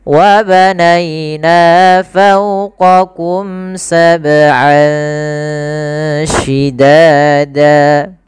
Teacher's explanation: Kemudian lafal an ketemu shin. Ini ada bacaan ikhfa, yaitu kita samarkan suara an ya ke huruf shin. Jadi terdengar seolah-olah dia ada eng gitu ya, tapi bukan ang, tapi dia ikhfa.